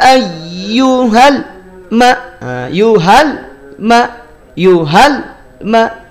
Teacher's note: lam itu dia tidak dialirkan seluruhnya suara bunyinya tidak dialirkan seluruhnya tapi dialirkannya sedikit saja juga tidak dihentikan Makanya hati-hati jangan sampai dihentak ya jadi jangan sampai dipantulkan Jangan